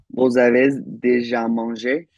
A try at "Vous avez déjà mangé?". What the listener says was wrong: And I think I heard that Z sound. You tried to rein it in, I heard, but avez. Avez.